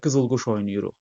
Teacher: Qızılquş sözü məsələn oyun mənasında işlənsək qızıl quş oynayırıq. Burda vurğu sondadır.